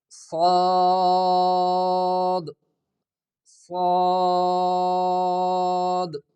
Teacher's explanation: اس سین سٹی کی آواز کو موٹا کر کے اس سے پھر سواد بن جاتا ہے